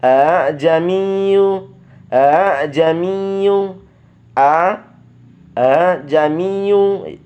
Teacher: Hamzah yang kedua diringankan bacanya seperti membaca huruf ha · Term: tashil